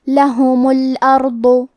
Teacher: حرف الراء ہے اور اس کے بعد حرف الضاد ہے تو ہم یہ دونوں حرف کو تفخیم سے مطلب بھاری آواز میں پڑھیں گے